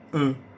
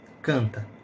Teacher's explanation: Em canta, por exemplo, há apenas 4 fonemas. O C, o AN, que aí é o A nasalizado.